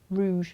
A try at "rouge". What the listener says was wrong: You're supposed to roll the R though, aren't you?